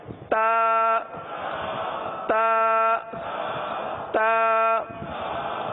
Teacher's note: زبان کی نوک اور اوپر کے دانتوں کی جڑ سے یہ حرف ادا ہوتا ہے۔